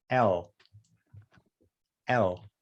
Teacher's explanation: i'm sticking my tongue in front of my teeth and then my lip is also hitting it